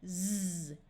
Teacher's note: Put your hand on your throat and say the sound z. You will feel your throat vibrating in a way that it didn't do when you did the hissing sound of s. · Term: voice sound of z